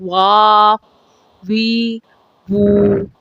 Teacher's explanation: حروف واو ہونٹ کے گول ہونے سے ادا ہوتے ہیں، لیکن ہونٹ بند نہیں ہوتے